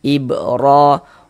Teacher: Huruf ra memiliki harakat harakat fathah nih ya atau tanda baca fathah. Maka huruf ro dibaca tebal, dibaca tabkhim sehingga pangkal lisan kita naik terangkat ke atas. Tebalkan huruf r-nya.